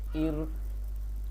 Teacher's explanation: را کے ساتھ زیر آئی ہوئی ہے تو اب را کو ہم نا بریک پڑھیں گے